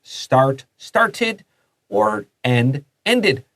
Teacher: 因為這個是 /t/ 或是 /d/ 結尾，那個 -ed 會發 /ɪd/ 的音